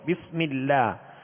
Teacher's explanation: بسم اللہ، اللہ عز و جل کے لام سے پہلے میم کے نیچے زیر ہے، لہذا اللہ عز و جل کے لام کو پر نہیں بلکہ باریک پڑھیں گے